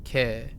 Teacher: Although it to an English speaker, it sounds like it's carrying the E longer. Ke.